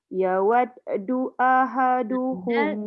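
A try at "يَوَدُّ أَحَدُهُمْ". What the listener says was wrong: Dal tu jangan yawaddu. Jangan hidup balik itu. Terus je.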